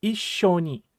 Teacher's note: make sure that you're putting an adequate pause between the single e sound and the sh sound